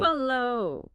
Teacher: you usually stress the second syllable